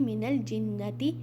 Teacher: नून मुशद्दद, यहाँ पर हम गुन्ना करेंगे